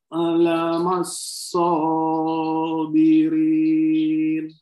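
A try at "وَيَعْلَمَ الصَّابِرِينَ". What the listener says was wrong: Bunyi ainnya perjelas, Pak. Wa ya'lamassabirin.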